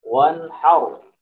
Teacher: Wan har, wan har. Kemudian ra-nya ini juga dibaca tafkhim, dibaca tebal. Wan har. Jadi tebalnya ra seperti itu kira-kira.